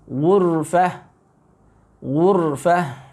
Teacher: dibaca dengan ra-nya tafkhim, tebal